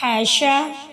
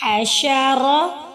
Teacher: را کو یہاں بھی ہم موٹا کر کے ادا کریں گے کیونکہ اس کے اوپر زبر آ رہا ہے